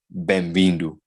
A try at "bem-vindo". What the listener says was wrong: I'm hearing a little bit of that M. So take off that M. Bang. Bang.